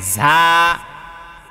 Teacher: ঝায়ের উচ্চারণে বাতাস বের হয়ে যায়, ঠিক আছে, এবং ঝিঝি পোকার মতো উচ্চারণ।